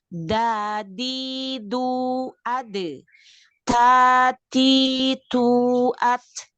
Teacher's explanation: dal sama ta itu sebenarnya posisi lidah kita itu tidak di belakang ke langit-langit. Jadi hanya di tempat tumbuhnya gigi. Tada, sebenarnya itu sama tempat ininya, tempat sandarannya, yaitu di tempat tumbuhnya gigi seri kita, ya.